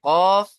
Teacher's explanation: জীবের গোড়া থেকে তার বরাবর উপরের তালুর সাথে লেগে উচ্চারণ হয় কফ। · জীবের গোড়া হতে একটু আগে সরে এসে তার বরাবর উপরের তালুর সাথে লেগে